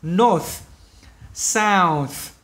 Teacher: North, nhớ cái âm cuối cho mình này, âm vô thanh này.